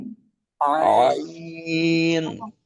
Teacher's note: এরপর হলো আইন, গলার মাঝখান থেকে